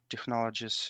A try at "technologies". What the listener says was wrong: Not with a ch, not technologies. I know in Russian it's technologia with a ch sound, but in English we don't have the ch sound.